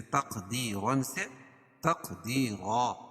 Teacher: 2 زبر کی تنوین پر وقف کی صورت میں ایک زبر کے قائم مقام الف پڑھیں گے